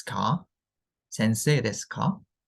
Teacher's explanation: since it's a question, it's usually pronounced with the rising intonation on the ka. So ka kind of like you read it with a rising intonation, like ですか?